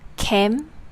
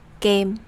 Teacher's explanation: The English K is made with a puff of air, while the Vietnamese C/K are made without. This means that when making the Vietnamese C/K sound, you don't have to use that extra force to make a puff of air.